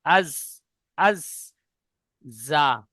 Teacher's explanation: জিভের আগা এবং সামনের, উপরের এবং নিচের 2 দাঁতের আগার সাথে লাগিয়ে উচ্চারিত হয় জা, সিন, সদ।